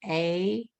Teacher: a lot of words had the A sound, which is down a little bit lower, your jaw's lower